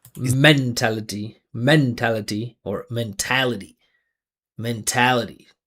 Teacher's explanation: So you see I'm emphasizing this the syllable before um the ity. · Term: rhythm pattern